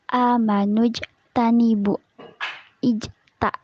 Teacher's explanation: Hukumnya adalah qalqalah sugro karena salah satu huruf qalqalah yaitu jim berharokat sukun berada di tengah kalimat. Cara membacanya yaitu dengan sedikit dipantulkan. Ijtanibu. Bu hukumnya matobi'i karena waw sukun didahului huruf berharokat domah.